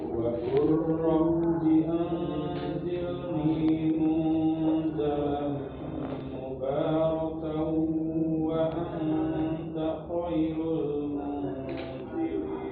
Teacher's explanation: Jadi ketika kita idghamkan ke huruf wawu, ya, maka monyongkan bibir kita.